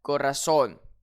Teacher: Je vais donc accentuer sur le O final.